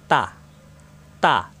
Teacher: জিব্বার আগা উপরে 2 দাঁতের গোড়া লাগবে